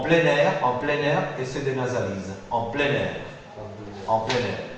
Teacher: Et enfin, il y a une petite observation, c'est que le 1, la voyelle ouverte nasale, est en position atone, elle se dénasalise dans un contexte atone